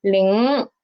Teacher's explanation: the root of my tongue is rising up